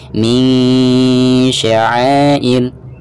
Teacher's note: Jadi ikhfa itu tidak dibaca ang, ing maupun ung ya, melainkan suara dengung yang keluarnya itu dari pangkal hidung.